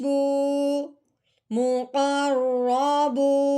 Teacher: قوف رو زبر قر، مقر، رو کے اوپر زبر ہے، رو زبر رو، مقر رو، با کے اوپر پیش ہے، آگے واؤ ساکن ہے، واؤ ساکن ہو اور اس سے پہلے حرف پہ پیش آ جائے تو پہلے والا حرف جب واؤ ساکن کے ساتھ ملے گا تو ساتھ ساتھ ایک الف کے برابر لمبا بھی ہوگا۔